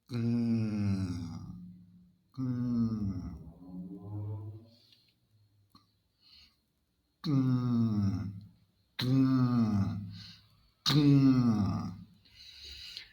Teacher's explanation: The sound is voiced, so the throat vibrates the whole time. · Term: NG sound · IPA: /ŋ/